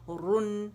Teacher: رن موٹائی سے پڑھیں گے، زبان کی جڑ پیچھے اٹھے گی